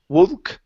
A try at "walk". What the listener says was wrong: take out the L and open your mouth. Instead of wool, take out the L. Walk.